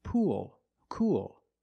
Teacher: you have the long o sound followed by the dark l